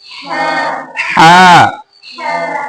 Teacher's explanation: क्या हो? इसको हलक से निकालना है। कैसे? हा। और थोड़ा सा खींच के पढ़ना है। हा। इसको उर्दू की तरह उर्दू जैसे पढ़ते हैं, हे नहीं बोलना है।